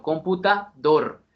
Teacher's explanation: una palabra aguda usted no dice computador ni computador sino computador se le da más relieve a la última sílaba